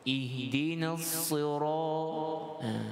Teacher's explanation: huruf ra dibaca dua harakat dengan menebalkan ra